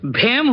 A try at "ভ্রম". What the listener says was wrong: হেম নয়, ভ্রম, এটাতেও রফলা লাগবে।